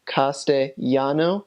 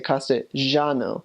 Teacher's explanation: So that's kind of the Spanish that Ecuador speaks, is Castellano. So when you use words that have double L in Ecuador, you say them as a Y sound, Castellano, versus as in other countries, for example, Argentina, you say Castellano.